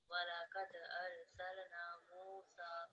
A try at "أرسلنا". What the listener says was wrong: So again, ra and lam sakin, they just need to be completely mute. Arsalna.